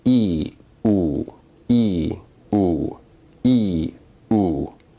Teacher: Remember that E is a high vowel, but it's also a front vowel, while Oo is a back vowel. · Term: backness